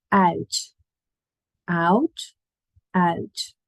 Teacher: so you go more like an I rather than an ow · So you go more like an ow rather than an ow. It's pretending to say an A and a U really quickly, separately, and then make them glide like a police siren.